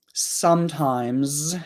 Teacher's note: comments right now so sometimes has an S on the end if we pronounce it very clearly the final s might sound like more like a z but in conversation we often don't pronounce it that clearly however